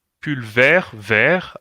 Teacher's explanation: la T no se pronuncia, sino es femenino